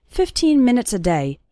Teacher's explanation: You can see that the last two syllables of minutes become very small and just serve to connect with the word day